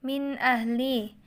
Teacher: sukun terletak setelah rakaat lemah Min ahli adalah bacaan izhar karena ada nun sukun bertemu dengan Hamzah maka dibaca jelas